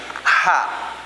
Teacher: Udaranya terdorong dari tengah tenggorokan, ya, dengan kuat. Kemudian selain dia keluar udara, selain hamas, dia juga memiliki karakter yang lainnya.